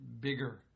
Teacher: that er sound in bigger is created by that r and children hear the r but what they don't hear is the previous vowel